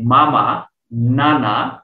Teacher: বর্গের পঞ্চম বর্ণগুলো উচ্চারণের সময় বাতাসটা নাসিকা বা নাক দিয়ে বের হয়। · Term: নাসিকা বর্ণ